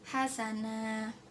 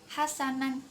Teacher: Hasana ini bacaan mat iwad sebab tanwin fathah dihentikan pada akhir kalimat ini mat iwad. Bacanya panjang. Hasana bukan hasanan.